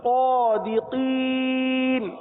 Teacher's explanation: آخر میں مد عارض کا قاعدہ ہے اس لیے اس کو تین الف تک کھینچ کر پڑھیں گے